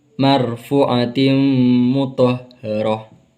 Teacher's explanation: Marfu ini termasuk bacaan mad tabi'i karena waw sukun didahului oleh dhammah, dan mar'atim mutahharah ini termasuk hukum bacaan idgham bi gunnah karena tanwin bertemu dengan mim, dan ada hukum bacaan ro tafkhim karena ro berharakat fathah.